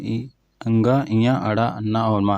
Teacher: अनुनासिक जिनको बोलते समय नाक से आवाज़ आती है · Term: अनुनासिक व्यंजन